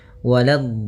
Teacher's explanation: Hati-hati di sini. Waladh, la-nya jangan sampai tebal, jangan waladh, tapi la-nya tipis. Waladh, baru di dot-nya yang tebal.